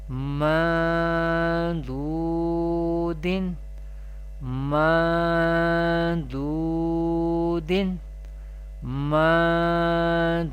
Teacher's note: Dod is Mustaliya letter we pronounce with thicker voice or thick voice or heavy voice.